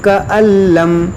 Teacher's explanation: یہاں پر دیکھیں نون ساکن کی آواز نہیں آئے گی